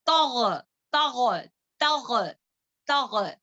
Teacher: गाइन को मोटा करेंगे, ता को बारीक पढ़ेंगे, थोड़ा बैलेंस रखें।